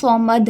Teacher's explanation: صاد حرف مستعلیہ میں سے ہے، ٹھیک ہے۔ صاد کو ہم ہمیشہ موٹا کر کے پڑھتے ہیں اور دال پہ قلقلہ ہی ہوگا، ٹھیک ہے۔